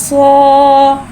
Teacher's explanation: सौद में सीटी को ज़ाहिर करके पढ़ेंगे